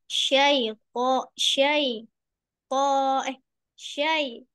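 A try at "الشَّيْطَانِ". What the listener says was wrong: Syaito. Kuat ya. Jadi jangan sampai itu pasti lemah itu. Tidak rekan kuat. Padahal po ini adalah huruf paling kuat dari semua huruf. Karena punya sifat apa kuat semua sifat-sifatnya ya huruf po ini.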